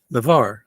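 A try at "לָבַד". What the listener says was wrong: Lavad, it's a dot. I don't know if it's too small for you to see. It's a dalet at the end.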